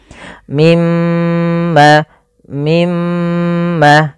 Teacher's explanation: lafal mim berharakat tasdid dan di sini diwarnai dengan warna hijau Artinya kita menahan suara mnya sepanjang dua harakat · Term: gunah, gunnah